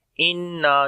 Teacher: نون کے اوپر شد ہے، غنہ کریں گے، لمبا کریں گے، آواز کو ناک میں لے کر جائیں گے، نا کو بھی لمبا کریں گے، الف مدہ ہے اور اس کے اوپر چھوٹی مد بھی ہے۔